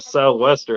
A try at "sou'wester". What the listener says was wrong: Relax your mouth. Why are you over pronouncing it? Just say sou'wester. Just say it fast. Sou'wester.